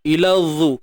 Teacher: Keluar ujung lidah dan zat kena tebal.